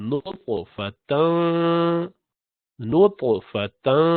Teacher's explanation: طا جو ہے طا اس کو موٹا پڑھتے ہیں, نطفہ قلقلہ کے ساتھ